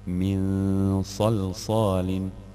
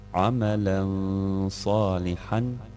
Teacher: čitat ćemo kroz nos komplet harf nun sa sukunom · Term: izgovaranja kroz nos